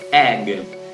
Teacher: Esta es una E corta y la boca abierta